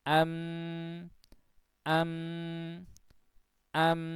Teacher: melalui rongga hidung atau al-khayshum yang kita sering sebut dengan bunyi dengung atau al-gunnah. Itu jadi kurang lebih begini kalau kita lamakan ya durasinya.